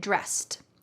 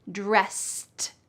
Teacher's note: at the end of the word dressed, it sounds like a t even though it's e d.